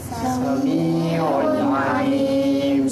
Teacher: Maka tak boleh baca sami'u. Tak boleh. Dia kena un. Bunyikan unnya tu. Biar jelas. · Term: izhar halqi